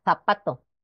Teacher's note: En las de hablas del centro y norte de España representa el fonema interdental fricativo sordo, que es lo que conocemos como la Z, zapato.